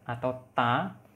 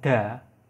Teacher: kalau yang at atau yang at-ta'u itu tidak bersuara, sedangkan kalau ad-dal itu bersuara